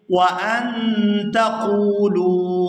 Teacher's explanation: قاف کو پورا ادا کرتے ہوئے واو ساکن کے ساتھ ملائیں گے اور کھینچ کر ادا کریں گے · لفظ اللہ کے لام کو پورا ادا کیا جائے گا کیونکہ اس سے پہلے زبر ہے ۔ صرف لفظ اللہ کے لام کے لیے یہ قاعدہ ہے